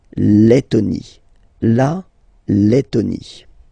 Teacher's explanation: when you've got this E and then a double letter like that, T, T, okay, then you will have to open your E and it will become E, Le, Lettonie.